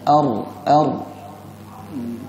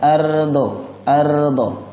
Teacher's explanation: Lidahnya bergetar dengan tebal.